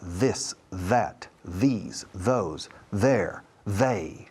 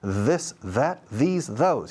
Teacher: Se coloca, se descansa sobre el inicio de los dientes frontales superiores y luego the. Y haces como si fuera una Z, pero las cuerdas vocales entran en acción a la vez the, y se oye, se siente toda una vibración por la mandíbula de la cara. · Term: TH vibrada